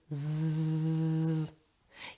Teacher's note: Put your hand on your voice box and say Z. You'll feel that there is vibration from your voice box, and this is because Z is voiced.